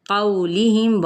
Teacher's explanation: قولہم، واو لین کا قاعدہ، میم پہ اظہار کرنا ہے یعنی میم کی آواز کو ظاہر کر کے پڑھیں گے